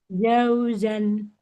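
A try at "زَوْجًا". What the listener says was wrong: Zai dulu baru jim, bukan jim dulu baru zai. Jadi bukan jauzan, tapi zaujan. Kebalik. Za, za, zaujan. Zaujan. Seperti Z. Zaujan. Enggak boleh jaujan. Za. Za. Enggak ja. Lidahnya nempel ke gigi seri bawah. Za.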